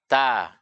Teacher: Kalau ta itu sifatnya tipis, ya, dibaca ta. Nah, otomatis mulut akan terbuka.